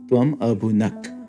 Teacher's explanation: but the S will drop and it'll just become tuam abunak, you ate